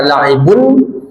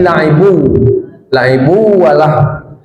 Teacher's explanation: La'ibu walah, la'ibun nun ba yang tanwin bertemu waw, apa idgham di gunnah, dimasukkan lalu didengungkan, tidak dibaca la'ibun tapi la'ibu walah.